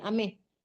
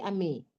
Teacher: tidak pakai H di belakangnya. Jadi bukan ameh, tapi ame.